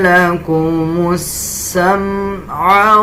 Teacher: وَجَعَلَ لَكُمُ السَّمْعَ اس میم کو دیکھیں، اکثر لوگ اس کو پڑھتے ہوئے غنہ کر دیتے ہیں، اس میم پہ غنہ نہیں کرنا